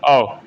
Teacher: कंठोष्ठ से भी बोला जाता है और दीर्घ स्वर भी है